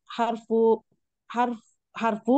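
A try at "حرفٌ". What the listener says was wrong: Tanwin kan.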